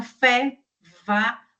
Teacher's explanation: o som, ele tem aí um caminho que é estreito na hora que ele passa, como se fosse uma fricção, é como se fosse um chiado mesmo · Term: fricativas